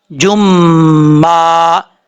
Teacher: یہاں پر جیم کے اوپر دو پیش ہیں، دو پیش کی تنوین کے بعد میم آ رہا ہے حروف یرملون میں سے، تو یہاں پہ ادغام یرملون ہوگا، ایک الف کی مقدار غنہ کیا جائے گا